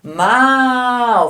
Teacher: Como este A aqui é mais demorado, ele é um som mais forte e este U aqui é o som mais fraco. Então é a vogal e a semivogal.